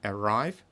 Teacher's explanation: это второй слог под ударением